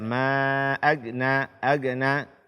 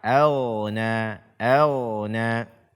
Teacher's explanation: membaca ghain sukun dengan tipis pada kata auna